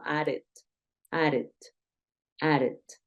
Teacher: En este caso, como termina en D, added, added. Tiende esa D repetida a ejercer un sonido como de R